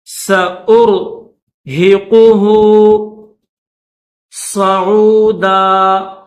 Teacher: حمزہ کو را کے ساتھ ملائیں گے، را کو موٹا کریں گے